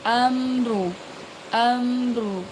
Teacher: Ingat ada mim sukun bertemu dengan ro dibaca jelas